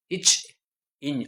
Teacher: நாவோட இடைப்பகுதி நடு அன்னத்தின் இடைப்பகுதியை பொருந்துவதால் பிறக்கிறது. நடு அன்னத்தின் இடைப்பகுதி, நாவின் இடைப்பகுதி நடு அன்னத்தின் இடைப்பகுதியை பொருந்துவதால் பிறக்கிறது.